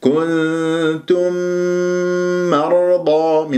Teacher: ميم كنتم أدغمت في ميم مرضى إدغام متماثلين، صارت ميم مشددة